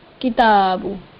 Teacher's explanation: ज़ालिकल किताबु, किताबु, काफ के नीचे ज़ेर नहीं खींचा इसको, ता पर खड़ा ज़बर है, एक अलिफ की मिकदार के बराबर इसको खींच दिया, और फिर बा पर पेश है वो बगैर खींचे